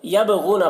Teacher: बा में कलकला होगा, बा हुर्फ़ कलकला में से। गैन को पुर पढ़ेंगे, गैन हुर्फ़ मुस्तालिया में से है।